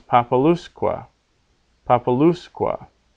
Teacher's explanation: but now with quet on the end it becomes papaluska papaluskua because that U becomes long because it comes before two consonants in a row